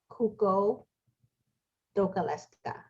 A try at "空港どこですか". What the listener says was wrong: Right.